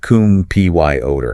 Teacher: the E in the final syllable is also reduced, becomes a schwa combined with the R. · The primary stress in the word computer lands firmly on the middle syllable